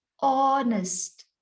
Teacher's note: the word honest begins with a vowel sound because you do not say honest the h is silent in this word